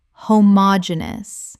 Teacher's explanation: Five syllables with the stress on the third.